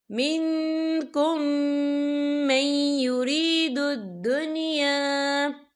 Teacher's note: یا دیکھیں منکم، یہاں میم ساکن ہے، میم ساکن کے بعد جو ہے میم مشدد والا حروف آ رہا ہے، تو یہاں پر ادغام شفوی ہوگا. ہم پچھلے میم کو اگلے میم میں مدغم کریں گے اور ہم یہاں بھی غنہ کریں گے